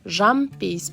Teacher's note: айтылуда Н дыбысының орнына М дыбысы естіледі. Жазылуда бұл ескерілмейді.